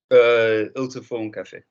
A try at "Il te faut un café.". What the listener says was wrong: Don't say el, say il. Remember the vibration.